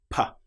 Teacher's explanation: With the P sound, we build up pressure without using the vocal cords. P. That sound is completely silent until it releases.